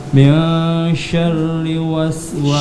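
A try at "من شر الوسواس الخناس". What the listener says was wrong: Syarril. Ada lamnya. Syarril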